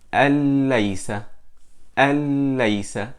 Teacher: we merge the noon sakina into the lam, and it becomes lam mushaddada, and we don't do ghunna